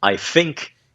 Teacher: uma coisa que você vê em Cockney é eles trocarem o TH por F